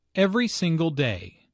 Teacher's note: Notice that each word here is stressed. The speaker wants to make a point, so she emphasizes each word equally.